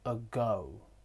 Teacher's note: The jaws are in the middle. The tongue is in the centre, it's central. And the lips are relaxed. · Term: the schwa